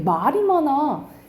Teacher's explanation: 사람 말을 길게 발음해요